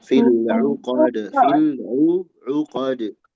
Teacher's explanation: Uqad di sini ain ya, jangan hamzah.